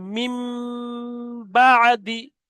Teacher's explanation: তাহলে মিম বা আদি ইজরা করতে হবে, যে নুন সাকিনের পরে বা এসছে, ওই জন্য করে নুনকে মিমের দ্বারা পরিবর্তন করে একালিপ পরিমাণ গুণনা করে পড়তে হবে, একে ইকলা বলা হয়, এটা হলো ইজরা।